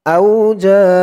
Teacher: চার আলিফ টান মধ্যে মুত্তাসিল